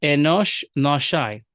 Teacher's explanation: the Syriac does not vocalize the aleph. This is a phenomenon called apheresis